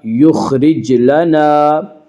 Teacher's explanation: خا کو پر پڑھیں گے، خا حروف مستعلیہ میں سے ہے